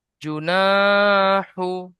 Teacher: শুরুতে জু টান হচ্ছে না। শেষে হু টান হচ্ছে না। পিসখানে নাটা টান হবে। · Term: আলিফ মাদ্দা